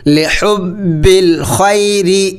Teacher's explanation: را کو باریک پڑھا جائے گا کیونکہ را کے نیچے زیر ہے